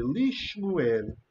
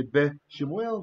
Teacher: So what happens is, this schwa, we do compensatory lengthening. He lengthens from the non-vowel schwa to the shortest vowel that we have, which is a chiriq